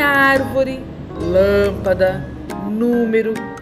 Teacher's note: proparoxítonas, que a sílaba tônica é a antepenúltima